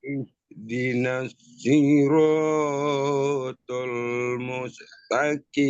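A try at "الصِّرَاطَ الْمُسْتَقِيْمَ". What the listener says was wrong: Siroknya kepanjangan. Seayun aja. Ihdinas siratal mustaqim.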